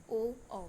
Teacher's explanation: कंठ ओष्ठ्य स्वर से ओ बोला जाता है